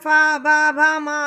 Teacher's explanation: ओष्ठ है, क्योंकि इनमें होठों को छूकर ध्वनि बाहर आती है। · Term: ओष्ठ्य वर्ण